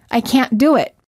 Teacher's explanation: Americans hold the T and say, I can't do it. Held T plus a consonant. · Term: silent T